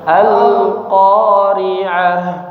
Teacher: qnya jangan panjang-panjang, dua harakat saja